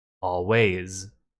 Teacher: The end of always is way, a, which is voiced. So the S is a Z.